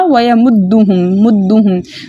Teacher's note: हम मीम साकिन को इसके मखरज और सिफात के साथ खूब जाहिर कर कर पढ़ेंगे। ठीक है, दाल मुशद्दद मजबूती और जमाव के साथ पढ़ा जाएगा, क्योंकि इसके ऊपर अंदर जो है मुशद्दद हरफ के अंदर 2 हरूफ छुपे होते हैं, तो हमने इसको मजबूती और जमाव के साथ पढ़ना है।